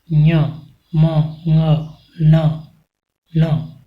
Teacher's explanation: साथ ही यम गणना नाम नासिका, अर्थात नासिक के वर्ण ञ, म, ङ, न, इनका उच्चारण नासिका से किया जाता है